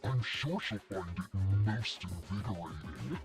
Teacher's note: That little vocal fry at the end.